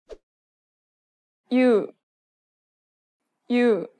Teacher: take the original oo sound and add a Y to make you. Together, they sound almost the same as you in English, but with a shorter Y.